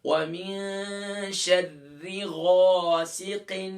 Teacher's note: اب دیکھیں ہم نے غین کا مخرج پڑھا تھا کہ غین حروف مستعلیہ میں سے ہے، موٹے حروف میں سے ہے، اور غین کو ادا کرتے وقت اس کا مخرج کیا ہے؟ ادنا حلق، یعنی گلے کا وہ حصہ جو ٹاپ آف دا تھروٹ کہلاتا ہے، وہاں سے غین ادا ہوگا، لیکن اس کو ادا کرتے وقت ہم موٹا کریں گے